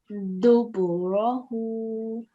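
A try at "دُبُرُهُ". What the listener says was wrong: Very nice. Okay, very nice pronunciation.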